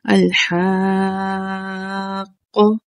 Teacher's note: صرف اور صرف 6 حرکات تک اسے کھینچ کر پڑھنا ہے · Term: مد لازم